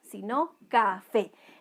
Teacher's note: esta palabra es aguda, porque su mayor entonación de voz está en la última sílaba. Y habíamos dicho que las palabras agudas, siempre y cuando terminen en NS o cualquier vocal, llevan tilde.